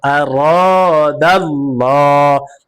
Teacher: মাযা হামজা জবর আ রা আলিফ জবর র আর দাল লাম জবর দাল লাম কারা জবর ল আর আরাদাল্লাহ লাম কারা জবর ল, লামের উপরে খারা জবর আসার কারণে এক আলিফ টেনে পড়তে হবে, আর এই আল্লাহ শব্দের লামকে পুর করে পড়েছি, অর্থাৎ মোটা করে পড়েছি